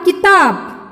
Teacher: देखो बच्चों, यहाँ पर की का उच्चारण मैंने बहुत जल्दी किया, किताब। त का उच्चारण यानी आ की मात्रा लगी है, यानी इसका उच्चारण बहुत दीर्घ करना है, यानी आ यह स्वर एक दीर्घ स्वर है, इसलिए उच्चारण बहुत अच्छी तरह से करना है।